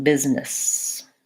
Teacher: So I'm saying the same vowel in both syllables, first syllable stress, and this S sounds as Z. These double S's say S, so it sounds like business.